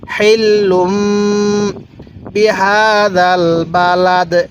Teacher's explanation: আমি কিন্তু হাটা উচ্চারণের সময় মুখ দিয়ে হালকা বাতাস বের করছি